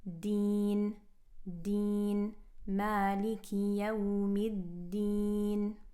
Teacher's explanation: Kind of like our English D. Take out all of that T quality and make it a very clear dal.